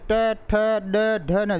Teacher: ट बोलते हैं, ट ठ ड ढ न, ये तालू का अगला और जीभ के पास वाला जो भाग है वहाँ टकराती हैं, उसको बोलते हैं मूर्धा या मूर्धन्य। ये मूर्धन्य वाले वर्ण हैं 5।